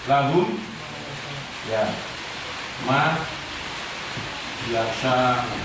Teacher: Mim sukun bertemu dengan mim, maka dengungnya harus dibaca dengan dengung yang sangat dalam.